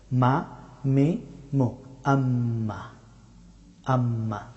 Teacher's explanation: মিম হরফটি উচ্চারিত হয় দুই ঠোঁট বন্ধ করে, তবে ঠোঁটের শুকনা অংশ থেকে মিম হরফটি উচ্চারিত হয়।